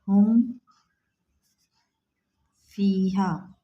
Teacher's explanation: اظہار شفوی میں بلا غنہ کے پڑھنا ہے، بالکل بھی غنہ نہیں کرنا ہے، ناک میں آواز نہیں لے کے جانا ہے، بلا غنہ کے پڑھنا ہے، یعنی آواز میم ساکن کی بالکل بھی ناک میں نہیں جائے گی۔